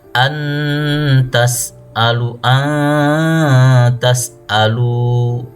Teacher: nun atau suara tanwinnya itu tetap ada tapi samar antara izhar dan idgham tidak jelas dan tidak juga dimasukkan atau diidgamkan.